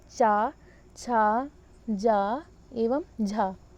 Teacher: और स्पर्श संघर्षी, इनकी संख्या 4 होती है, चा, छा, जा एवं झा। वे वर्ण जिसमें स्पर्श भी होता है और हवा को संघर्ष करके बाहर आना पड़ता है स्पर्श संघर्षी के अंतर्गत आते हैं।